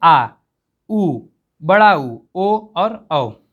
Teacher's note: वे word जिनके उच्चारण करते समय जीभ के पिछले भाग यानी पश्च भाग का प्रयोग हम लोग करते हैं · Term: पश्च स्वर